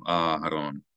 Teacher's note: So we elongate the first syllable of Aharon.